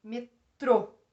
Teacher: É o trô. Então, é a última sílaba que é a mais forte. · É uma palavra em que a última sílaba é a mais forte. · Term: Oxítona